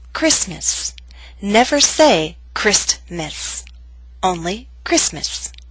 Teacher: Christmas is one of those words in English that is written with a t but we don't pronounce it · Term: omission of the consonant sound